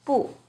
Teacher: alone it's always the fourth tone